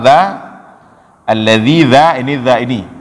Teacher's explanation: dza yang ujung lidah keluar dan tergigit sedikit dengan ujung gigi seri atas.